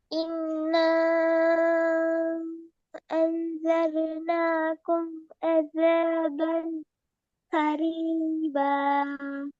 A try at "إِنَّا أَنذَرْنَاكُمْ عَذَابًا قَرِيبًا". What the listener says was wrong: என்ன அதாபன் என்றதுக்கு பின்னால ஏன் நின்னீங்க? என்னது ரீசன்? அதாபன் கொரீப. ஏன் அந்த இடத்துல நின்று போற காரணம்? அதபன் என்று ஓதி கொஞ்ச நேரம் நின்றுட்டெல்லாம் அது கொரீபன்னு ஓதின அப்படி இல்லையா?